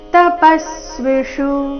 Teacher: ತಪಸ್ವಿಷು ಪ ಮೇಲೆ ಆಘಾತ ಕೊನೆಯ ಶು ರಸ್ವ